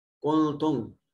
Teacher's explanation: نون ساکن کے بعد تا حرف اخفا ہے، نون کو اپنے مخرج میں چھپا کر ادا کریں گے